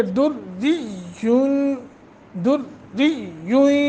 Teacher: کوکبن، اخفا کریں گے، نون تنوین کے بعد دال ہے، پھر را مشدد ہے، را کو باریک پڑھیں گے